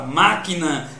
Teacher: a palavra máquina, que a sílaba tônica é má.